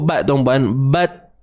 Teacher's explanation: Sifat hams, iaitu nafas yang terlepas. Selepas tertahannya suara, terlepaslah nafas.